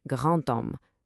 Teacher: A D is going to sound like a T